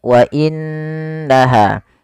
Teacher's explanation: Apabila ada nun berharakat tasydid kita hukumi dengan bacaan ghunah yaitu suara nunnya kita tahan dengan sepanjang dua harakat wa inaha tidak langsung dibaca WA innaha tapi ditahan dulu suara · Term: gunnah